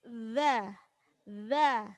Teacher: Dza itu ujung lidah digigit.